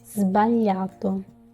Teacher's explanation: As you can hear as well, it is not a S sound as scatola, but it's not also a Z sound as zaino. It is in between. So sbagliato, like the Z of the mosquitoes, if that can help.